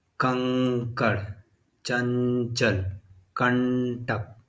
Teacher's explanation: अनुस्वार बिंदी की मात्रा जो होती है इसमें उच्चारण नाक से अधिक सांस निकलती है और मुख से कम